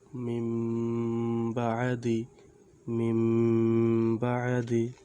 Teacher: নুন সাকিন বা তানবিনের বামে ইকলাবের হরফ বা আসিলে ওই নুনে সাকিন বা তানবিনকে গুন্নার সহিত মিম পড়িতে হয়। যেমন এই যেখানে নুন রয়েছে, নুন, নুনের উপরে সাকিন, নুন সাকিনের বামে বা আছে, বা হচ্ছে ইকলাবের হরফ।